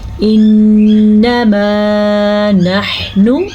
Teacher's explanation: ہم نے یہاں پہ غنہ کیا میم کے بعد الف مدہ کو ادا کیا